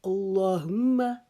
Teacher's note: اسی طرح لام کو موٹا کریں گے، میم کے اوپر غنہ کریں گے، ایک الف کی مقدار رکیں گے